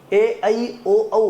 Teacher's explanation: ए ओ औ हे संयुक्त स्वर आहेत हे तयार होताना मुळातच दोन वेगळे स्वर दोन विजातीय स्वर एकत्र येऊन तयार झालेत